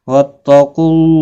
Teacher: میں اظہار شفوی ہوگا۔ وَإِن تَفْعَلُوا فَإِنَّهُ فُسُوقٌ بِكُمْ وَاتَّقُوا اللَّهَ قاف مستعلیہ ہے، پر پڑھا جائے گا